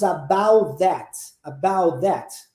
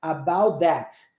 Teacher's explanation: a gente engole o t do about e emenda direto no that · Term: omissão dos de um dos sons